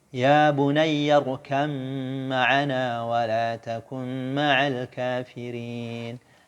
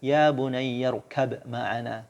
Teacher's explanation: Ba di idgham ke dalam mim.